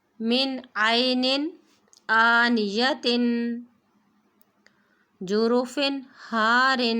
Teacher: تنوین کے بعد حروف ہلکی میں سے حمزہ ہے تو تنوین کو غنّے کے بغیر پڑھیں گے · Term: اظہار